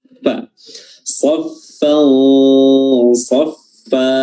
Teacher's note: huruf fa, gigi atas, gigi seri atas bertemu dengan perut bibir bawah